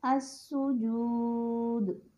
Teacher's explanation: اس کے بعد ہے ساکن حرف پر وقف کیا جائے، یعنی سکون ہے لیکن وقف ہو رہا ہے اور اس میں بھی قلقلہ نمایاں ہے، السجود۔ آپ نے محسوس کیا دال پہ قلقلہ ہوا